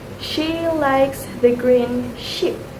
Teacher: A is a multi-art vowel or thrift tongue that needs a smooth glide from a into while the consonant sh is a voiceless fricative made with a slightly rounded mouth and the tongue raised behind the alvolar ridge. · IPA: /ʃ/